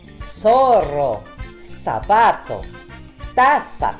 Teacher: on termine avec le Z qu'on prononce S.